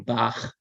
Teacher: that's the sound you find in the German composer's name Bach it's a sound made in the back of the throat with some friction